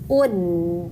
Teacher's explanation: Nah, di sini hamzah domah u ketemu dengan dal sukun ud. Nah, itu e ujung lidah menempel ke pangkal gigi seri atas ya.